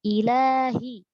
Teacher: huruf lam fathah dan dia ada mad alif di situ, ila panjang 2 harokat, ilahi.